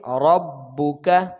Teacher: اچھا جی، را کو با کے ساتھ ملا کر پڑھیں گے تو یہ تشدید حرکات کے ساتھ ہے تو لہٰذا یہ جلدی پڑھیں گے اس کو، اور کاف کو بھی باریک پڑھیں گے لیکن جلدی بھی ادا کریں گے